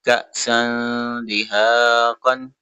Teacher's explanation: کا پہ جھٹکا دیں گے، حمزہ ساکن ہے اس وجہ سے